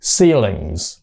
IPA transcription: ˈsiːlɪŋz